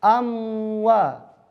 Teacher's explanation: Kebanyakan orang melafalkan demikian karena wawunya monyong. Jadi setelah mengucapin mim, belum tuntas mimnya langsung ke waw.